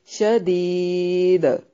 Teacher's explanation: دال پہ قلقلہ ہوگا، قلقلہ کو وقف کی صورت میں واضح کرنا ہے شدید، تو یہاں ملانے کی صورت میں